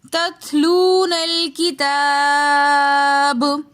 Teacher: با کے اوپر ہم نے قلقلہ کرنا ہے اور با کی آواز کو ہم نے واپس پلٹا کر واپس لے کر آنا ہے